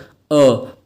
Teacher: गले के मध्य से आवाज आ रही है, बीच में से आवाज आ रही है। आ गया पश्च स्वर। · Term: मध्य स्वर